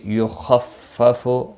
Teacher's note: خا مستعلیہ ہے، پر پڑا جائے گا